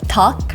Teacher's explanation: It's in between a d and a t sound.